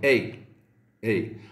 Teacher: La deuxième diphtongue de l'allemand ressemble au français Eil, mais sans trop appuyer sur le second élément de la diphtongue.